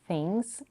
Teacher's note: we have a relax I in things and the first syllable of into